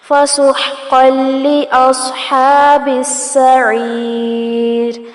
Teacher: یہاں پر قاف کو لام کے ساتھ ملایا جائے گا اور جو تنوین کی آواز ہے وہ اسکپ ہو جائے گی، اس کو ادغام بغیر الغنہ کہتے ہیں.